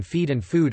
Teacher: so that ee and oo in feed and food are pronounced with a movement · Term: diphthongised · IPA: [ɪi] and [ʊu]